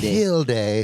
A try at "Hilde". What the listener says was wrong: it's ilde h h is silent but you know it's not Hildy